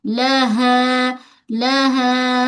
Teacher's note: Suara mad ke rongga mulut bukan ke hidung. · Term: alif mad